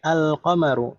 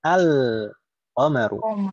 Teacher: Qaf ini huruf qamariyah. Kalau kita tambahkan al, maka lamnya ini terbaca jelas, izhar.